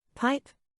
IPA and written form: paɪp (Pipe)